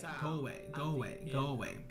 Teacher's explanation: The O sound at the end of go links with the A in a way, sounding like go away, go away, go away, go away. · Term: Linking, linking